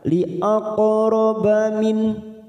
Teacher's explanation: ada huruf qaf sukun, namanya qalqalah sugro. Karena mati di tengah kalimat kita pantulkan li'aqraba min, nun sukun bertemu ha, idhar halqi, kita baca jelas tanpa mendengung.